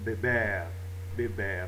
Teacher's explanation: un r dans une consonne qui n'est pas s ou n donc l'accent se fait sur la dernière syllabe